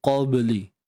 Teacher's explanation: Ba yang sukun. Di sini terdapat sifat qalqalah lantunan. Qalqalah sughra. Jadi hati-hati, bunyi di sini santai je.